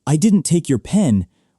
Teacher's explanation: >> Yeah, like if someone says, "I didn't take your pen." With stress on didn't, it sounds like they're defending themselves. But if they meant to say someone else took it, they should stress I.